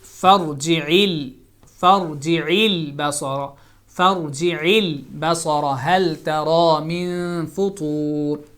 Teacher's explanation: It's lam sakin. You don't make any qalqala sound.